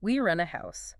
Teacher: But if you're making a statement like, we rent a house, the intonation tends to be flatter, maybe rising slightly and then falling at the very end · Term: Statement intonation